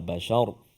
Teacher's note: Bashar kan huruf ra sebelum dia baris atas. Ra tu kita matikan dia, so dia bunyi tebal